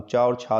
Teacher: चा और छा जो है वो तालु की सहायता से बोले जाते हैं